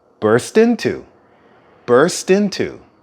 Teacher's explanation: the T at the end of the word burst is actually connected to the next word into so what you hear sounds more like verse tend to births